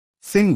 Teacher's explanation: Sing voiced nasal velar